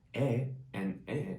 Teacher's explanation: for example 애 and 에 sounds almost the same